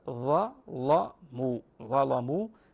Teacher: جاءت فيه اللام مفتوحه مسبوقه باحد موجبات تغليظ وهو حرف الظاء وتوفر فيه احد الشروط وهو انه جاء مفتوحا فتغلق اللام هنا